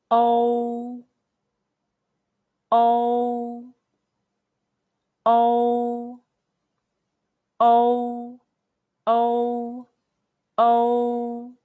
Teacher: it's close to the o in english word no but it's shorter there's no need to prolong it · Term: the final